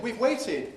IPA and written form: wiv ˈweɪtɪd (We've waited)